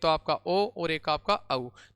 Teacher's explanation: इनका उच्चारण स्थान कंठ और होष्ट दोनों से होता है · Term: कंठोष्ट